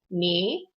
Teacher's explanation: And it's really close to second tone, which is just going up like a question mark